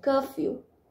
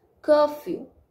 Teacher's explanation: The first part of this word is stressed and second part is unstressed